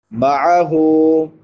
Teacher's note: جو سینے کے ساتھ ملا ہوا ہے، جس کو اقصی حلق کہتے ہیں۔ معہ، عین حلق کے درمیان سے ادا ہوتی ہے